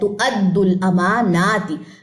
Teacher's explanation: یہ حمزہ جو ہے نا اس کی زبر ہے، تُؤَدُّوا الْأَمَانَاتِ. میم بھی لمبا ہوگا اور نون بھی لمبا ہوگا.